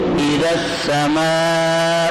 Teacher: اب زال کے بعد پہلا الف بھی نہیں پڑھتے, دوسرا حمزہ بھی نہیں پڑھتے, لام بھی نہیں پڑھتے, زال کو سین سے ملا رہے ہیں